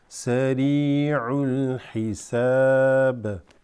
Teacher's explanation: This ra is going to be extended slightly because of the ya.